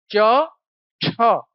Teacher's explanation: वायु घर्षण के साथ बाहर आ रही है। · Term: स्पर्श संघर्षी